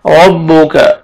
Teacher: را کو زبر ہے، را کو موٹا کر کے پڑھیں گے، کاف کو باریک کریں گے